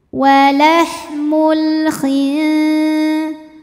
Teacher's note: Karena alif lam menghadapi huruf qomariyah yaitu huruf kha, maka alif lamnya dibaca dengan jelas atau disebut dengan idhar qomari.